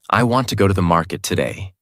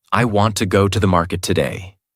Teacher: Want, go, market are strong. Other words become lighter and faster. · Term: Natural American rhythm